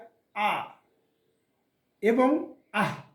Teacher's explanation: এটা কণ্ঠনালীর মধ্যভাগ থেকে উচ্চারণ হবে দুটি অক্ষর। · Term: আইন ও হা